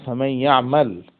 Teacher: ফা ইন্নানা নুবদিলু নুন আস-সাকিনাতা ইয়াআন সাকিনা, আমরা নুন সাকিনকে ইয়ায়ে সাকিনে পরিবর্তন করি।